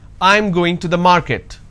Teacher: this is a statement and it's a flat intonation